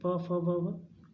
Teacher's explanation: ओष्ठ, अब देखो इनको बोलोगे तो ओठ से ही बोले जाएंगे, प फ ब भ, दोनों ओठ क्या होते हैं? आपस में लगते हैं